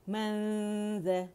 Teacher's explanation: ذال کے بالکل قریب میں نے زبان کی ٹپ رکھی ہوئی لیکن ٹچ نہیں کی ہوئی، اور غنہ ساتھ جاری ہے، نون چھپائے ہوئے میں، ٹھیک ہے.